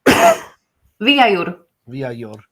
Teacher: So, that rolled R at the end.